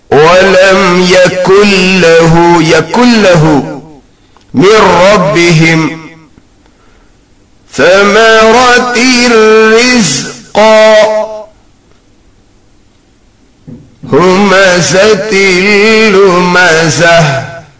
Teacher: in ra and lam it is without gunnah